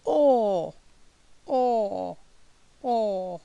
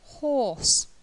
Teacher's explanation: open up we've got or or or for example horse okay this is a long sound the mouth is now definitely more more towards open we'd say half open for this the lips or are rounded